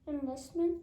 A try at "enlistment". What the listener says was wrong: Yeah, and what is enlistment?